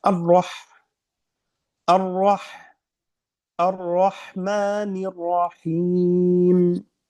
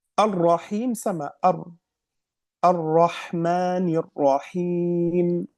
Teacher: huruf ra seperti tadi tasdid berhenti dua harakat dan ada sifat tikrar